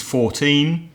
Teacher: the stress is on the second syllable for numbers in their teens